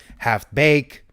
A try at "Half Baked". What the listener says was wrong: You say half bake? You left out the D.